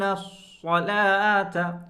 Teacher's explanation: صاد کو پر کریں، موٹا کریں